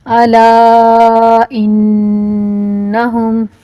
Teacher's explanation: الا کے اوپر جو چھوٹی مد ہے اس کو بڑی مد کی نسبت کم کھینچیں گے